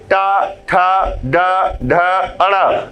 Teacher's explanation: आपकी जिह्वा दंत मूल के पिछले हिस्से, तालु के अगले हिस्से को जहां पर स्पर्श कर रही है वही उच्चारण स्थान मूर्धा कहलाता है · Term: मूर्धन्य ध्वनि